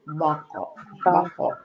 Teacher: Makhrajnya pangkal lidah naik ke atas. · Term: istilah